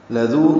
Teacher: لذو لام کو جلدی سے پڑھیں گے، باریک ہے، ذال نرمی سے پڑھا جائے گا اور ذو واو مدہ ہے، 2 حرکات لمبا کریں گے